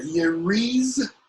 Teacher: The S is pronounced like a Z because it's between two vowels.